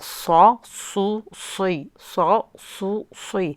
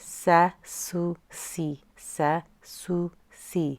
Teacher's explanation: we make the sad heavy by tensing up the tongue and raising it at the back.